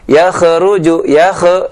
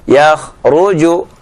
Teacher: huruf K jangan diqalqalahkan karena dia bukan huruf qalqalah. Tidak kita baca yakruju yak itu berarti qalqalah.